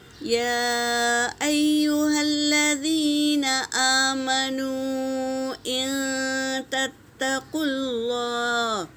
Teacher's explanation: یا پر مد ہے، مد منفصل، تو اسے 3 سے 4 الف کے مقدار کھینچیں گے، اور دوسرے یا پر تشدید ہے، اسے 2 بار پڑھیں گے۔